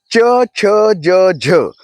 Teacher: च छ ज झ हे उच्चार तालूमधनं निर्माण केले जातात.